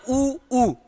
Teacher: उ ऊ का उच्चारण करते समय होठ अगर वृत में ना आए ना तो आप उच्चारण ही नहीं कर सकते हो